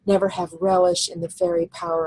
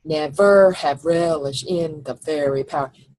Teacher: Never is not an iamb, it's a trochee. The accent is on the first syllable.